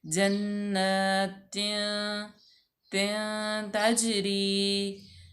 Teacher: दो ज़ेर के बाद आ गया ता हरूफ इफ़ा में से, तो यहाँ पे हम आधा गुन्ना करेंगे। जन्नतिन तजरी, ता जो है वो मफ्तू है और जीम साकिन है, तो यहाँ पे जीम हरूफ कलकला में से है, तो यहाँ पे कलकला किया जाएगा।